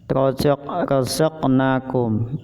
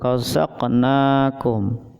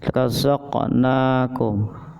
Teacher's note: Contohnya razaqnakum, jadi sedikit memantul, razaqnakum, jadi sedikit pantulannya, qafnya sedikit memantul, razaqnakum. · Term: qalqalah sughra